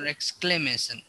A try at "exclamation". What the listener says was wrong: Exclamation. Exclamation. Excla. We say cla. We don't do the I. We kind of roll over the I in that word, but it's exclamation.